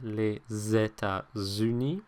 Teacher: it's not pronounced as an S, it's pronounced more like a Z · The S kind of moves over to the next syllable. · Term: liaison